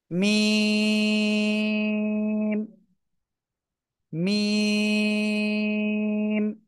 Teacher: দুই ঠোঁট, এই দুই ঠোঁটের শুকনো জায়গা থেকে উচ্চারণ হবে। দুই ঠোঁটের বাইরের অংশ বা শুকনো জায়গায়, এই যে মিম।